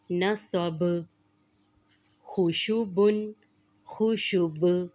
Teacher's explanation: جب ہم اس پر وقف کریں گے تو اس کی تنوین کو ختم کر دیں گے اور با پر قلقلہ کریں گے۔ جیسے نصب، خوشبن، خوشب، یہاں پر بھی با پر قلقلہ کریں گے۔